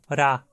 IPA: ɾ